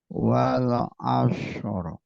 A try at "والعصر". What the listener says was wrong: Nah, ini shad bukan shin, bukan shin. Wal asr. wal asr. Jangan di fathah tapi disukun. Asr.